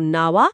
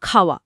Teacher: এই যে অতিরিক্ত য় বা ব আসছে, এগুলোই শ্রুতিধ্বনি। এই শ্রুতিধ্বনিগুলো দুটো স্বরের মাঝখানের ফাঁকটা ভরাট করে উচ্চারণকে মসৃণ করে তোলে।